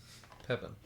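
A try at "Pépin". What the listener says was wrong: Well, one thing I've learned, my French friends have told me, and you can let me know if this is right, is pretty much in French, just don't pronounce the last letter of the word. And it's not Pepin, it's Pepi.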